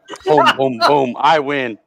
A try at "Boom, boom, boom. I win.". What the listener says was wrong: No, you have to say it in that high voice.